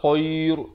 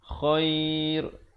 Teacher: Dia ra ni jadi nipis. Datang sebelumnya huruf ya. Yang bertanda mati.